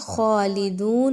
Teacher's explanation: فیہا، فا زیر یا فی یا مدہ، ہا الف زبر ہا، الف مدہ، خالدون میں دیکھیں تو خا موٹا حرف ہے، اس کو موٹا پڑھا جائے گا، دو جو ہے وہ واو مدہ ہے، 2 الف کے برابر، اس کو لمبا کر کے پڑھیں گے